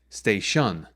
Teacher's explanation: if we stress the second syllable which shouldn't be stressed then we get stay shun